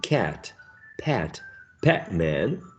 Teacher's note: ah ah as in cat pat pac-man the lips are not rounded so these are going to be called unrounded vowel sounds